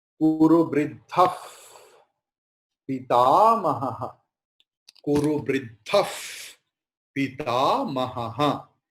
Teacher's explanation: Here Visarga is following Pakara. So the Visarga's pronunciation will be Pakara.